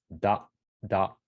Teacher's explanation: So when the T becomes voice, it becomes da. So the D letter, da, da.